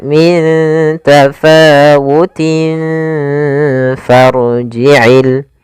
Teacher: Makhraj huruf fa sendiri yaitu gigi atas menempel dengan bibir bawah. Kemudian ditahan gunahnya. · samarkan tanwinnya ke huruf fa. Maka min tafawutin langsung ke makhraj huruf fa. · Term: ikhfa